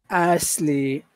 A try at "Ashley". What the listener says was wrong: raise your tongue so that your tongue is blocking the air, because the air goes through and it goes everywhere off to the sides, and that's what makes that sound. Raise your tongue up.